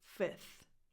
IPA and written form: fɪθ (Fifth)